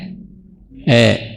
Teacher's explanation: antara fathah dengan imalah namanya takqlil. Bunyinya antara a dan e. Tadi antara a dengan i jadi e.